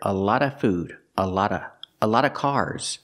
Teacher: the sound V in a lot of is not always heard if it's before a consonant sometimes it disappears you hear a lot of food a lot of a lot